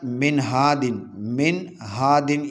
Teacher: نون ساکن اور تنوین کی آواز کو غنہ کیے بغیر جلدی پڑھیں گے۔ اس کو اظہار کہتے ہیں، اس کو اظہار کہتے ہیں، یعنی نون ساکن یا تنوین کے بعد حروف حلقی میں سے کوئی حرف آ جائے تو وہاں پر غنہ نہیں کریں گے بلکہ اظہار کریں گے۔